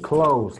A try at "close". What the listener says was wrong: Me dijiste como A, close, no, es close, con O, close.